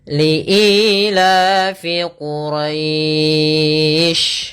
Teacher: Tapi kita biasanya lebih kenal dengan mad lin. Maka quraisy kita boleh memanjangkan untuk mad lin harakat, boleh empat harakat dan boleh pula enam harakat.